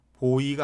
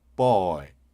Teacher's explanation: 그 소리가. B가 초성에 올 때는 쌍비읍에 가깝게 들린단 말입니다. boy가 아니라 boy.